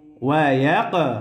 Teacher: কফ কলকলার হরফ, প্রতিধ্বনি আওয়াজ হবে, ধাক্কা দিয়ে পড়তে হবে।